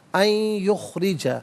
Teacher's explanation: ان میں نون ساکن ہے، اسے یخرجا کی یا کے ساتھ ملائیں گے اور یا کی آواز کو غنے کے ساتھ ادا کیا جائے گا۔